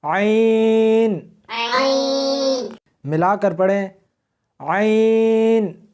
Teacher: اس کو حلق میں سے سختی کے ساتھ نکالنا ہے۔